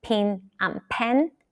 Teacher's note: Some American English speakers pronounce the words pin and pen exactly the same.